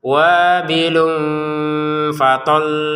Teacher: Ini tanwin bertemu fa dibaca dengan samar.